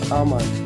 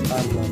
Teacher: ব্রিটিশরা বেশিরভাগ ক্ষেত্রেই আর এর উচ্চারণ করে না, আর এর উচ্চারণ হবে আ।